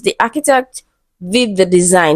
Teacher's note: So the emphasized word is design. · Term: emphatic stress